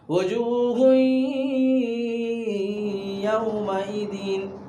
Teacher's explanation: ادغام کر کے یعنی ناک میں تھوڑی دیر آواز کو چھپا کر پڑھیں گے